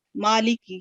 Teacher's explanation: माली की ये short vowel है, कसरा लाम भी कसरा के साथ है और काफ भी, इसको लंबा नहीं करेंगे। कुछ करते हैं कि माली की कर देते हैं, लेकिन माँ को 2 सेकंड पढ़ेंगे।